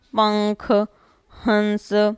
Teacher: नाक पे जोर जा रहा है, सिर्फ ध्वनि नाक के माध्यम से ज़्यादा निकल रही है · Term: अनुस्वार